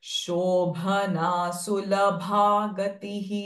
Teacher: शो दिस श is normal not रेट्रोफ्लेक्स